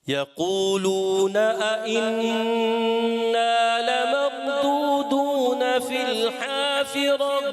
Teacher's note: اِنَّا غنّے کی مقدار پوری رکھنی ہے